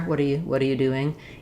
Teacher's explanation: You just want to be very short on the word you. So either oo or and quite short. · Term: reduced U